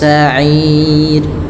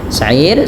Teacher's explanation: ada huruf berharakat kasrah sehingga tidak dibaca dengan tebal tapi dibaca dengan tipis